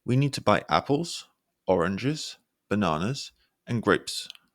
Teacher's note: voice Rising on each item that's listed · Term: Rising inflection